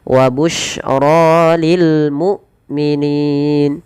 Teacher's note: Kemudian pada ro dibaca dengan tebal rya dan ini bukan wabus ya tidak dibaca wabus ya tapi wabusyro w busyro lil mukminin lil mukminin hamzah tidak boleh diseret dan dia harus dijelaskan suara bunyinya penahanan daripada suaranya dan penahan dari nafasnya